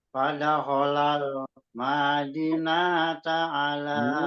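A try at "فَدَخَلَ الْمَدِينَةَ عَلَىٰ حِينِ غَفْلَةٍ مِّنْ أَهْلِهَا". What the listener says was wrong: Ini malah ketukar-tukar, Pak. Malah ketukar-tukar panjang pendeknya. Panjang pendeknya malah ketukar-tukar.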